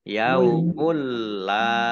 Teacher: masuk dengan tidak mendengung masuk ke huruf lam ditandai lamnya ada tasdidnya yaumulla. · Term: idgham bila gunnah